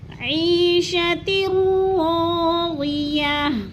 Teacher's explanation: ہم نے ادغام کرنا ہے، بلا غنہ کے بغیر ادغام کرنا ہے